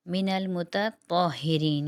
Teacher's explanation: من المتطہرین، یہاں پر تا اور طوا، تا باریک اور طوا موٹا